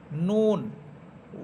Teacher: নুন, নুন জিহ্বার আগা সামনের উপরের জিহ্বার আগা উপরের তালুর সাথে লাগবে